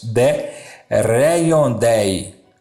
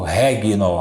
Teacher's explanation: Porque o G e o N a gente vai ler no latim eclesiástico com o som de NH